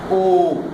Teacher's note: जब हम ओ का उच्चारण करेंगे तब हमारे होठ गोलाकार होकर के बाहर आएंगे